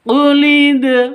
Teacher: Untuk dibaca qalqalah di sini harus dipantulkan ke dalnya. Dal huruf qalqalah jika sukun, syaratnya harus sukun.